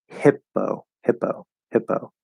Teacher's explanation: spelled with two p's it's just one p sound there's no pause there's no stop there's no anything it's just a p it's a soft p · pause there's no stop there's no anything it's just a p it's a soft p at the start of an unstressed syllable